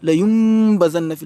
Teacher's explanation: La yum badan nafil, tout en faisant une ghunna, la nasalisation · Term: ikhfa